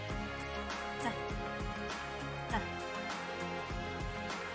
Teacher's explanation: voiceless stop made with the tip of the tongue on the alveolar ridge